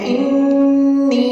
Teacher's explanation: انی 2 کاؤنٹس کے ساتھ یا ساکن پڑھیں گے